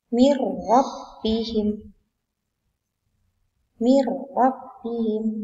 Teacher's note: Nun sukun bertemu ra. Maka harus dibaca idgham bila gunnah atau memasukkan dengan tanpa berdengung. Tidak boleh berdengung ya.